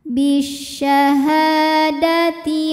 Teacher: cara bacanya ha dipanjangkan dua harakat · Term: Mad Thobi'i